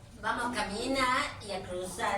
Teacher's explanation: why don't you articulate the final R in all the infinitive verbs?